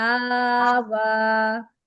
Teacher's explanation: آ کو بھی برابر کھینچیے جتنا واو کو کھینچنا ہے